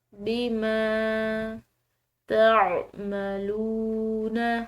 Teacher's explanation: عین حلق سے ادا کریں گے